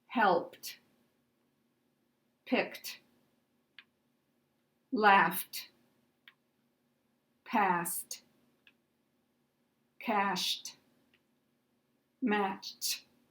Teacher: The T is voiceless, and it will follow these sounds which are voiceless. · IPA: [ t ]